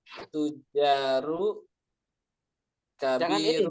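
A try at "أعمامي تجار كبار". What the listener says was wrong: jangan ragu-ragu, tanwinkan. Kalau dia tidak beralif lam, langsung ditanwinkan. A'mami tujarun gitu ya. Berarti a'mami tujarun kibarun.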